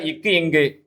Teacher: நாவின் முதற் பகுதி அன்னத்தின் அடிப்பகுதியை பொருந்துவதால் பிறக்குது